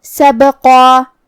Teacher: کلمت سبقہ میں ہاں بھی حرف البا کو ہمیں ہلاتے ہوئے یہ کلمہ کو ادا کرنا ہے